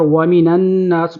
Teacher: نون کو نون کے ساتھ ملانا ہے، نون کے اوپر تشدید ہے تو غنہ بھی کریں گے ایک الف